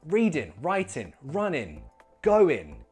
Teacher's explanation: you might want to contract the ing to an in sound and lose that last G. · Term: ing sound